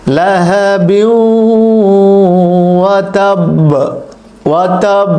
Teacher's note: হরকতের উচ্চারণ হবে না, তবে ধাক্কাটা একটু বেশি হবে, ধ্বনিটা প্রতিধ্বনিটা একটু বেশি হবে। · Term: কলকলা